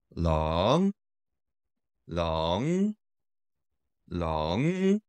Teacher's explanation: dragon is rising tone that is second tone